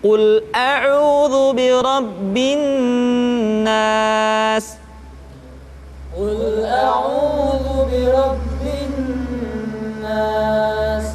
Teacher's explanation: Tidak boleh dibaca Qul a'udzu birabbin nas, tetapi ditahan suaranya ketika mengucapkan nun tasydid